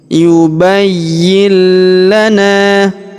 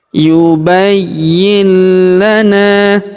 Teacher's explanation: Jadi tidak dibaca yubayyin, tapi langsung masuk ya, langsung masuk ke huruf lam yang berharakat tasdid ini ya. Yubayyil. Jadi nun sukunnya melebur ya.